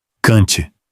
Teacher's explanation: Kant, curto, aberto, seco. Kant, sem nasalizar. Essa é a armadilha brasileira, porque a nossa tendência é dizer Kant, e o alemão pronuncia o N e o T.